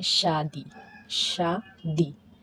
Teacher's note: Palatal, टंग और hard palate का मिक्स हो रहा है। तो एग्जांपल लेके, शादी, शादी, टंग से लास्ट में, टंग से क्या हो रहा है, टीथ जुड़े।